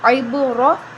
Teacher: پر ہم قلقلہ کریں گے، عین بازیر عب، را زبر را، را موٹی پڑھیں گے، را کے اوپر زبر ہے